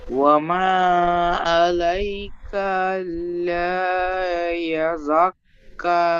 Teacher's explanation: লামটি আলিফ মাদ্দা একালি টান দিয়ে পড়তে হবে।